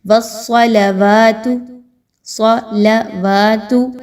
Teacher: واو پر کھڑا زبر ہے، اس کو دو حرکت کے برابر لمبا کریں گے